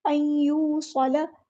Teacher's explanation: नून साकिन के बाद या आया तो इदगाम माअल गुन्ना होगा